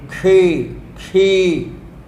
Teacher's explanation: अब यहाँ क्या है, दिक्कत यह है, आधे क को हम बोल ही नहीं पाते हैं। क के बाद मूर्धन्य श लेना है · क के बाद मूर्धन्य श लेना है, क्षी, क्षी। मूर्धन्य शकार का उच्चारण जीभ को पीछे की ओर मोड़कर करते हैं।